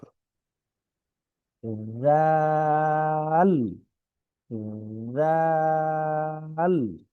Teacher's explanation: জিহ্বার আগা, দাঁতের আগা, নরম আওয়াজ। আমি যখন জিহ্বাটা দাঁতের সাথে লাগাবো, তখনই অটোমেটিক্যালি এটা কিন্তু নরম আওয়াজই বের হবে।